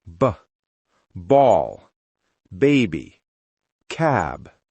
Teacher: For B, it's softer and voiced.